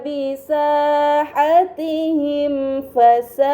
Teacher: Pada kata bisahatihim fasa'a terdapat mim sukun bertemu dengan huruf fa. Ini dinamakan izhar syafawi. Karena mim sukun bertemu dengan huruf selain ba dan mim, maka mim sukun harus dibaca secara jelas.